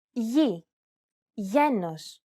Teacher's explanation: This letter is tricky because the pronunciation changes depending on the surrounding vowels. When it precedes an I or an E vowel, it's pronounced very much like an English Y sound